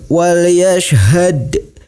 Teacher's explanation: Cara membacanya huruf dalnya sedikit dipantulkan. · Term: qalqalah sughra